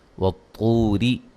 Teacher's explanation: ملانے کی صورت میں را کو باریک پڑھیں گے